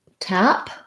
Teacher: we have our black cat vowel and voiceless p sound